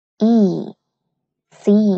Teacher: Bạn cũng sẽ phát âm dài và mạnh chữ E ở phía sau một chút nha.